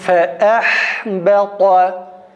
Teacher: Hemze boğazdan çıksın arkadaşlar